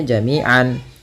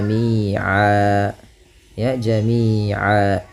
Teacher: Kalau kita waqaf maka tanwinnya diiwadkan, dibadalkan, diganti menjadi fathah saja ketemu alif. Maka jami'an berubah menjadi jami'a. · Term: mad iwad